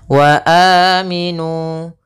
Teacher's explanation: Apabila ada huruf hamzah baik itu kasau bertemu dengan huruf-huruf mad maka kita namakan dengan mad badal panjangnya adalah dua harakat